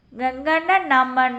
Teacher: இந்த எழுத்துக்கள் மூக்கினை இடமாகக் கொண்டு பிறக்கின்றன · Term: மெல்லின எழுத்துக்கள்